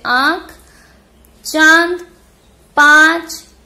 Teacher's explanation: मुख के साथ साथ नाक से भी जब हमारी आवाज निकलती है, जब ध्वनि निकलती है तो वहां पर अनुनासिक होता है